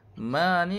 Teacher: Ma ni bacaan dia baca 2 harakat mad asli nah.